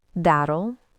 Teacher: It's a quick flap sound.